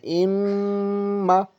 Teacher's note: 1-2 second کم سے کم ناک میں روک کر کے پڑھتے ہیں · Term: غنے کی جو آواز